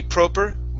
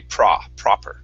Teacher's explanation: A British pronunciation would be proper. You'd have an O sound. In the United States, we would say an ah.